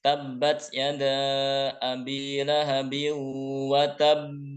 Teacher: Nah, qalqalahnya ditahan. Wa tabb ditahan baru kemudian dipantulkan. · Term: qalqalah kubro